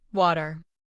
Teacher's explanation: In American English, we often say water with a soft D sound in the middle. In British English, it might sound like wada.